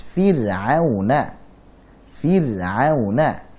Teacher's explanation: Begitu juga saat ra itu sukun dan datang setelah kasrah. Jadi ada ra sukun sebelumnya kasrah, maka itu dibaca juga dengan tipis.